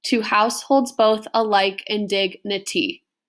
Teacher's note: I kind of read it purposefully so you could hear the unstressed stressed right unstressed stressed syllables · you have 10 syllables per line of poetry, and it's going to keep following that unstressed, stressed sort of pattern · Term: iambic pentameter